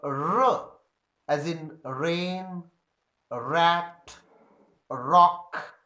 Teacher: You can feel in the production of R that the tip of the tongue is against the back of the alveolar ridge. Therefore, it is called post-alveolar sound.